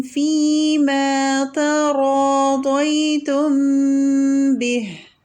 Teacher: فیما تراضیتم ہے، را تفخیم ہے، ضاد بھی تفخیم ہے. را سے پہلے کا تا اور ضاد کے بعد کا تا، یہ دونوں ترقیق سے ہی پڑھیں گے